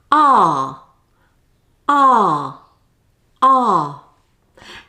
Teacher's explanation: It's a long sound. The tongue is low and the mouth is relaxed and the jaw is open. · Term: long monophthong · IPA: /ɑː/